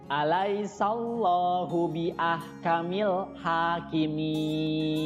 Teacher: Ha itu panjang 2 harokat, ya, namanya mad tobi'i. Kemudian kimin itu juga sama, namanya mad arid lisukun. Panjangnya bisa 2 sampai 6 harokat.